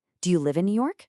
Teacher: But for a yes or no question, it goes up at the end. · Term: intonation